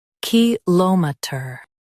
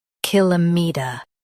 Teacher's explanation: In US, stress LOM. In UK, stress KIL.